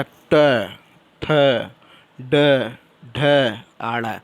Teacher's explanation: मूर्धन्य व्यंजन, मूर्धन मतलब जो जीभ है वो ऐंठ के आवाज़ आता है